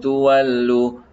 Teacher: kita sembunyikan bunyi nun tu tadi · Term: ikhfa